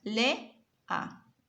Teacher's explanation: De la palabra lea tenemos las dos vocales separadas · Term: hiato